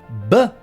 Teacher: the B sound is located at our lips which makes it labial